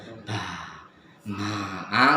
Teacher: jadi kayak huruf ba, ma itu tidak keluar nafas, tidak ba, ma. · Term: al-jahru